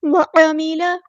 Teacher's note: آخری، وعاملہ، وعاملہ نہیں پڑھنا، اسے عین کو لمبا نہیں کرنا، وعاملہ، عین کو وسطی حلق مڈل تھروٹ سے ادا کرنا ہے۔